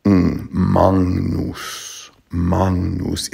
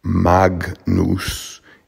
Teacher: the G before the N becomes an NG sound, sort of maNGnus, maNGnus.